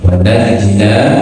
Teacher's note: nun yang di sini sebelumnya fathah, di depan ada alif, berarti baca 2 harakat